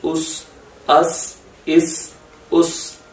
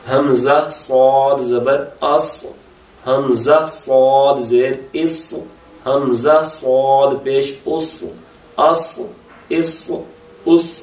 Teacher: ایک تو یہ تھن لیٹر ہے جو سین ہے اور تھک ہے جو صاد ہے. یہی آپ نے ڈیفرنس رکھنا ہے.